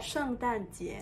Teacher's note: 圣 in fourth tone, 诞 fourth tone, 节 second